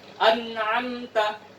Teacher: Tetap harus ada bunyi en. Jadi lidah ketemu dengan ujung gigi ya. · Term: nun sukun